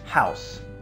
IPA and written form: haʊs (house)